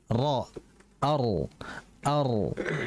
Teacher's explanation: Kalau kita menempelkan lama ya, itu kok terlalu lama. Akan tapi jika kita hanya menyentuhnya antara ujung lidah dengan langit-langit atas ya, atau disebut dengan al-hanakul a'la, langit-langit atas, maka itu akan mengulang 2 getaran